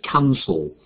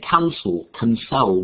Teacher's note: two syllables, and the stress is on the first syllable, so it's cancel.